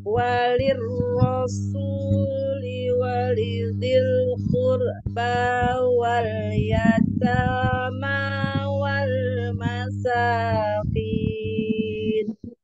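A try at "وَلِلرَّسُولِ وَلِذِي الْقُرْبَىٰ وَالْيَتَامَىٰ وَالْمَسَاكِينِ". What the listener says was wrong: Qurba, qurba, jangan diputus di situ. Walidil qurba wal yatama.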